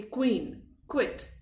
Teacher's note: जो क साउंड आता है, इसमें हल्का सा ख का पुट आप देंगे